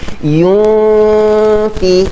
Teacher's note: Kita bersedia dah nak masuk kepada huruf fa bila kita dengung. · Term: ikhfa hakiki